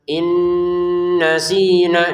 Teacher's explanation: Contoh Rabbana la tu'akhidna in nasina. Nah, nun sukun bertemu nun masukin nun pertama kepada nun yang kedua disertai dengungan